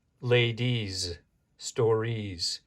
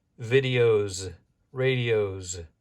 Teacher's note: Notice that the ending sound with the IES is Z